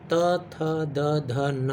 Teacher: तो त थ द ध न बोलने वक्त हमारी जीभ का जो टिप है, जीभ का जो ऊपरी हिस्सा है, टिप, नुकीला हिस्सा, वो बार बार आकर हमारे दांतों से टकराता है, इसीलिए इसे हम लोग कहते हैं दंत से टच करने वाला स्पर्श व्यंजन। त से लेकर न तक ये हमारे दांतों को छूता है, इसीलिए दंत से इसका उच्चारण होता है।